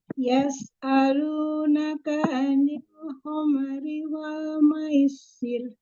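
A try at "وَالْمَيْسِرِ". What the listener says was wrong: Wal maisir. Pendek ya.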